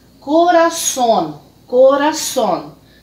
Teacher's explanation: a posição da sílaba tônica aqui na última sílaba